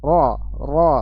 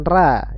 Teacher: Kalau ra itu tipis, tidak menaikkan pangkal lidah, suaranya tidak menaik.